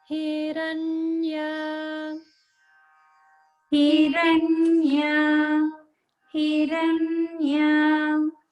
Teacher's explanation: So in this section in Hiranya, there's only the upper swara on Ra, and other sounds are middle swara.